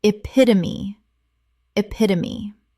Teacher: Four syllables, the E at the end is always pronounced.